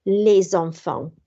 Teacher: So, oherwydd mae'r S dywel, mae'r silent S yna, yn dilyn gan llyfariad, A, E, I, O, U, neu H, byddwch chi'n dweud y S, wel, mae'n fel Z sound, a rydyn ni'n rhoi nhw gyda'n gilydd, neu rydyn ni'n cysylltu nhw gyda'n gilydd, so mae'n liaison, les enfants.